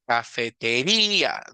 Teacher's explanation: dejamos la fuerza de voz hasta el mero final de la palabra